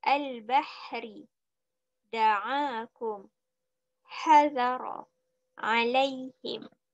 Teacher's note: Okey, semua ini keluar dari pangkal halqum, iaitu di bawah sekali. Okey, huruf ha dan huruf ain keluar dari tengah halqum